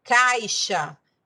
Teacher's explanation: Caixa, nós já temos 5 letras, mas 6 fonemas, porque o som ali é de CH.